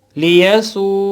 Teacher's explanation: واو مدہ پڑھی جاتی ہے, یعنی 1 الف کے برابر کھینچی جاتی ہے. یہاں اس کی وہی پوزیشن ہے کہ واو ساکن اس سے پہلے پیش ہے تو یہ 1 الف کے برابر پہلے کھینچی جائے گی.